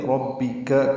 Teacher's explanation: کاف باریک ہے، جلدی ادا کریں گے